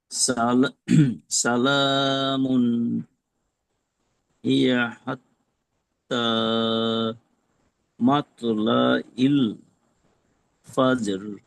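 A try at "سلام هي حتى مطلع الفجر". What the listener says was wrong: জি মাশাআল্লাহ সুন্দর হয়েছে তবে কলকলাটা যদি আরেকটু সুন্দরভাবে বলতে পারতেন তাহলে আরেকটু সুন্দর হতো জি এবার বাকি আছে হারুন রশিদ ভাই মনে হয় বাকি আছেন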